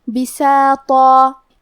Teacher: کلمت بساطہ میں یہاں حرف الطو ہے اور طو حروف تفخیم میں سے ہے تو ہم طو کو اور مد الف کو دونوں کو موٹی آواز میں پڑھیں گے